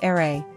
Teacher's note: R is pronounced as ere, with a rolled R sound